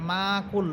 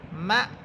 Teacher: আপনে মা কুল অনেকে এভাবে পড়ে যে মাকুল মিম হরফে টেনে ফেলে টান হবে না। বরং এখানে মিম হামজাকে শক্ত করে ধরবে এবং ধাক্কা দিবে